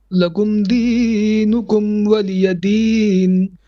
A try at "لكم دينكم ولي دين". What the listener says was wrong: So lakum dinukum, don't stretch the d. Lakum dinukum waliyadin.